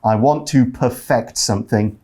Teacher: We see the word perfect being used as a verb there. When you use it as a verb, it's perfect. You put the stress on the second syllable.